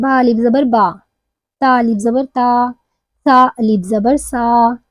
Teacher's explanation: اگر اس کے بعد الف آ رہا ہے، با کے بعد الف آیا ہے تو ایک الف کی برابر اس کو کھینچ کر پڑھنا ہے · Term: حرف مدہ